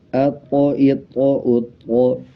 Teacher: طا کے اوپر جزم آ رہا ہے تو اس پہ قلقلہ کیا جائے گا